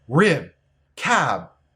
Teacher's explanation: of a sentence or if the next sound is a consonant we pronounce B as a stop a stop means that we make the shape for B and stop the air but we don't make B sound